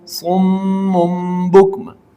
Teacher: اب دیکھیے اس کے پڑھنے کا طریقہ یہ کہ صاد میم دو پیش سم، میم دو پیش مم، سم مم، با کاف پیش بک، میم دو پیش من، سم مم بک من، وقفاً سم مم بکم۔ اس میں بھی آپ نے تنوین کو میم سے بدل کر غنہ کر کے پڑھنا ہے